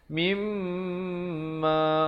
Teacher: Yang betulnya mimma baru masuk ma, mim didengungkan 2 harakat. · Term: wajibul gunnah